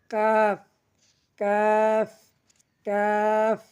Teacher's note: জিহ্বার গোড়া থেকে একটু আগে বাড়িয়া তার বরাবর উপরে তালুর সঙ্গে লাগাইয়া